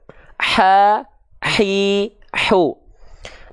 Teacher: karena hak kecil dilafalkan dari tengah tenggorokan ya maka dia akan mengalirkan nafas yang karakteristiknya berbisik atau seperti orang yang sedang kepedasan nah makanya ada yang bilang · Hak kecil itu dilafalkan tepat dari bagian tengah tenggorokan kita. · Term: hams